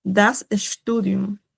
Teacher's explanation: Por ejemplo, tenemos ya muchos dirían, o sea, pensarían que se lee Studium, pero en verdad la ST se pronuncia como una sh